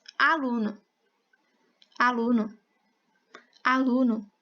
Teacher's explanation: A sílaba tônica da palavra aluno é a lu.